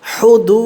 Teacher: তারপরে হা পেশ হু, দাল ওয়াও পেশ দু, এক আলিফ, পেশের বামে ওয়াও সাকিন, এক আলিফ টানতে হয়, মাদ্দে তবাই তারে কয়ে